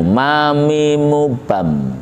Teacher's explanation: Perhatikan juga di ayat pertama ini ujung dari ayat pertama yaitu mim. Makhrajnya huruf mim, 2 bibir bertemu.